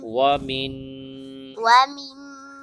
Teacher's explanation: واو زبر وا، واو زبر و، میم کے بعد نون، نون پر غنہ کریں گے۔